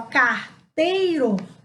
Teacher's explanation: olha o som do E, ele vai lá em cima e o I fica mais baixo. Então, o E é uma vogal e o I uma semivogal.